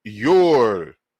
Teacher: they pronounce it yor, because the T, intervocalic T, weakens and drops. So you're just left with the I or Y, and the W represents the oo or or sound.